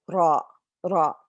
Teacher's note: The heavy ra, the sides of your tongue will touch your top molars, and you'll roll it a little bit.